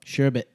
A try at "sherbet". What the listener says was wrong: Yeah, there's no second R. Yeah, there's no second R.